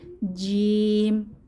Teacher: জিহবার মধ্যভাগ তার বরাবর উপরের তালুর সঙ্গে লাগিয়ে জিম উচ্চারিত হয় শক্ত মজবুত আওয়াজে